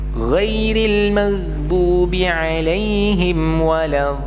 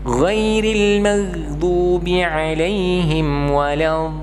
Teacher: yang benar adalah tetap diberikan getaran dotnya, karena sebenarnya di situ ada dua dot